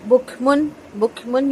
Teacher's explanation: یہاں پہ غنہ نہیں ہوگا کیونکہ تنوین کے بعد حروف حلقی میں سے عین آ رہا ہے، اظہار حلقی ہوگا